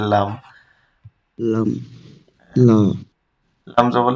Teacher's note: লামের মাখরাজ তো খুবই ইজি। জিহ্বার আগার কিনারা সামনের উপর দাঁতের গোড়ার সঙ্গে লাগিয়ে লাম উচ্চারিত হয়